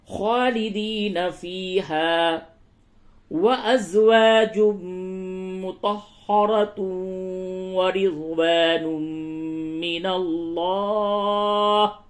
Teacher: تنوین کے بعد میم ہے، اس جگہ پہ غنہ ہوگا، ادغام مع الغنہ